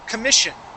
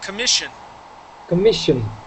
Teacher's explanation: So the double S that's here in the middle of the word, that sounds like an SH sound.